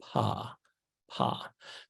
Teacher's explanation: you might be able to detect that your lips open just a little bit before your voice box starts to vibrate